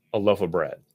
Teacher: We might just use the reduced vowel, our old friend schwa, instead of clearly saying the word of.